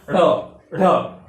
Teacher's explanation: जब आप ढ बोलेंगे तो आपकी जीवा तालु से टच करके सीधा नीचे की ओर गिरती है। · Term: उच्छिप्त व्यंजन